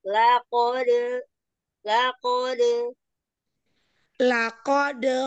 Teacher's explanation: bukan makhrajnya dari bibir tapi dari tengah pangkal